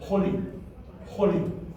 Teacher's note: But the Khatif Kametz is not a short R sound, because we've already got a short R sound in the Khatif Patach, which cannot be shortened. So a Khatif Kametz is actually a very quick O sound coming from the Kametz Chatuf.